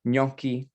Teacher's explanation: It's a ñ sound, a long O, and then a hard chi at the end. It's 2 syllables, gnocchi, and the I at the end makes it plural in Italian.